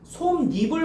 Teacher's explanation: 니은 소리를 첨가하여 니냐녀뇨뉴로 발음한다. 이를 니로 발음한다는 거야. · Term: 니은 첨가